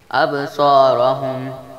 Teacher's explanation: ابصارہم، با ساکن ہے جس لیے با پر کلکلا کیا جائے گا، صاد حروف مصالیہ ہے جس لیے اس کو موٹا پڑھیں گے، اور را پر زبر ہے جس لیے را کو بھی موٹا پڑھیں گے۔